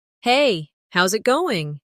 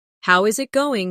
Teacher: The is disappears and the final G in going often softens. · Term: connected speech